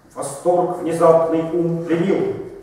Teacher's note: То был просто ямб, ровный. Мы четко ждали ударения каждый второй слог.